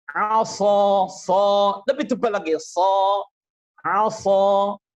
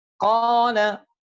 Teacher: Secara khusus yang harus kalian bedakan adalah al-itbaq aqwa. Sifat itbaq, tingkat ketebalannya aqwa, lebih kuat daripada ketebalan yang ada pada huruf-huruf isti'la.